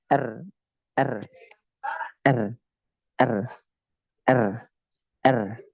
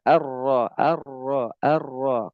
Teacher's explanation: jadi ro memang harus bergetar ya dia harus bergetar